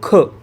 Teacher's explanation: हा झाला विसर्ग विसर्ग म्हणजे श्वास सोडण जस आपण दुःख तर दुःख म्हणताना श्वास सोडल्यासारखा फील होतोय · दुःख म्हणताना श्वास सोडल्यासारखं फील होतं आहे. मग ते दुःख, दूच्या नंतर आपण ते 2 टिंब लावतो ना, त्याला म्हणतो विसर्ग.